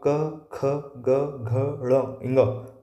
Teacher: अब आप इनका उच्चारण भी करके देखोगे तो आप समझ में आएगा कि भाई जब आप क ख ग घ ड़ इंगा बोलते हैं तो ये कंठ पे जोर आ रहा है, कंठ से उच्चारित हो रहे हैं।